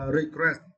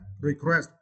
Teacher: And for this word, you need to stress the second syllable.